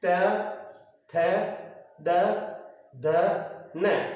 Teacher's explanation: कहीं ना कहीं जीवा है जो दांत को स्पर्श कर रही है, और दांत को स्पर्श करने के कारण ये कहलाया आपके दंत्य स्पर्श व्यंजन।